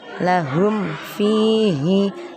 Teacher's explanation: Jadi cara membacanya terang atau jelas di bibir dengan mulut tertutup. Idhar syafawi, mim sukunnya dibaca jelas.